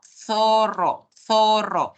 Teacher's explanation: en todo el Perú No necesariamente se pronuncia el fricativo interdental que es el sonido de la z que es cuando llevamos la lengua entre los dientes